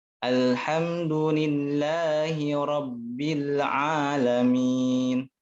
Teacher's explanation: Kesalahannya itu kenapa? Karena ada sebagian yang ini ya, memantulkan huruf lam. Ale. Nggak boleh ya. Harus jangan dipantulkan.